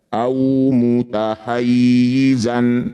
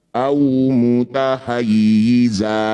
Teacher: Ini disebut bacaan mad iwat. Bunyi fathah tanwinnya kita ganti jadi fathah panjang. Jadi awalnya au mutahayizan ketika dihentikan au mutahayiza dua harakat saja. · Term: mad iwad